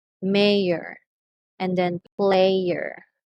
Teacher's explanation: e i and then the schwa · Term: triphthong